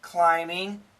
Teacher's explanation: of course the word climbing there's no B sound